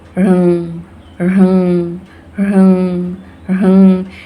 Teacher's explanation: ये जो बिंदु है ये अनुस्वार की तरह प्रयोग होता है, नाक से प्रोनाउंसिएशन होता है।